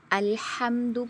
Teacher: ایک حرف کو دوسرے حرف کے ساتھ بدل دینا، جیسے دیکھیے الحمد کو الہم پڑھنا، ہا تھا درمیانے گلے سے اور آپ نے ہا پڑھا اقصی حلق سے، تو میجر مسٹیک ہو گئی۔